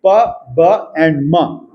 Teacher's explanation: क्लोजिव है और बलेबियल बलेबियल प्लोजिव। The two lips are the articulators. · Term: बाइबल साउंड्स